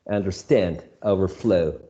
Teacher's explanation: we choose to place the emphasis or to make more prominent the second part of the word